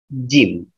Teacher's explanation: Jim biasa tengah lidah dengan langit-langit atas.